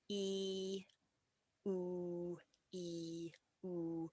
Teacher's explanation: So if we go from the E to the oo, now obviously E, oo, E, oo, my mouth is moving from very wide to very kind of closed and round.